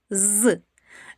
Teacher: Так, вимовляється дзвінко. Чуємо шум і голос. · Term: дзвінкий